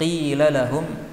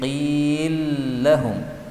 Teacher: Yang pertama pada ayat 43, qila lahum, ini boleh dibaca dengan idgham menjadi qil lahum. Lam yang pertama masuk pada lam yang kedua.